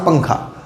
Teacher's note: اور اخفے میں کیا ہوگا کہ زبان آپ کی تالو سے نہیں لگے گی، نون کی آواز ناک میں رکے گی لیکن زبان تالو سے نہیں لگے گی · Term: اخفا